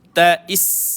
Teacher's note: bila mati sin, dia ada satu sifat dia panggil sifat safir. Mendesir tais gitu.